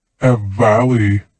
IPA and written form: ə ˈvæli (a valley)